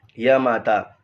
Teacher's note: सूत्र जो लिखवाया है वहाँ पहला देखिएगा, य माता, य ह्रस्व है और माँ और ता दीर्घ है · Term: यगन